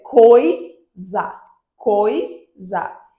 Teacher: o o, que é o mais forte, é a vogal, e o i, que é o mais fraco, é a semivogal